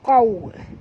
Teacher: huruf qaf tebal ya. Jangan baca qauma tapi qau. Okey, waw sifatnya lin lembut, muncungkan mulut.